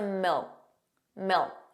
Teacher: So did you hear that the final K sound, that K, was not pronounced?